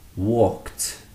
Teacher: It still has that t sound, not an ed sound.